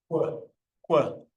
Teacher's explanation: We then also have what's called the labiovelar versions, which is when essentially when you're making your K sound, you take your lips and you round them as if you're also making a W at the same time